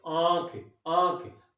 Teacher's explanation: बोलने में हम उसे नाक और मुख दोनों से उसकी हवा बाहर निकालेंगे। जैसे आंख, आंख दोनों से, मुख और नाक दोनों से निकलेगी। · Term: अनुनासिक